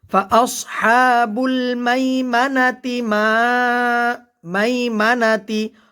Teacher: মাই এখানে জবরের বাম পাশে জজমলা ইয়া আসছে, লিনের হরফ দ্রুত পড়তে হবে। ফাআসহাবুল মাইমানাতি মা মাইমানাতি, আমরা এখানে ওয়াকফ করতে পারবো আবার মিলিয়েও পড়তে পারবো।